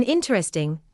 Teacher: In interesting, speakers often reduce the middle syllable, so the spoken word may sound shorter than the spelling suggests.